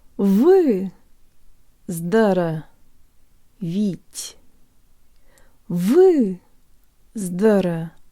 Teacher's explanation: The ye in the last syllable sounds like an E-flavored schwa, and the final te is soft, so we keep the tongue close to the roof of our mouth and use more air than we would in English.